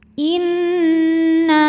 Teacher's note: Huruf nun ini dihukumi dengan gunnah musyaddadah atau wajibul gunnah. Sebab nunnya bertasydid, maka cara bacanya didengungkan. Jadi kita tahan bunyi n-nya kurang lebih 2 harokat.